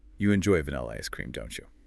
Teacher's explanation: That rising pitch on don't you means it's a real question. You're asking for new information. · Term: rising tone